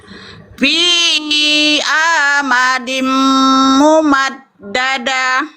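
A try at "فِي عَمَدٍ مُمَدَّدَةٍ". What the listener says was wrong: Nah, amadnya pendek ya. Fi amadim mumaddadah.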